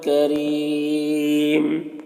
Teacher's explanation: यहाँ पर वक्फ़ की सूरत में मद्दे आरिज़ वक्फ़ी होगा